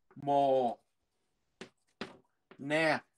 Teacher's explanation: âm đê câm nha, đọc là mồ nè